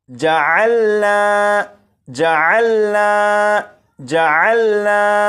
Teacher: جب الف سے پہلے زبر ہے تو یہ الف مدہ ہوا، اور اس لفظ کو پڑھیں گے جعلنا جعلنا جعلنا۔ یہاں پر نون کو ایک الف کے برابر کھینچ کر پڑھا، کیونکہ یہاں پر الف مدہ موجود ہے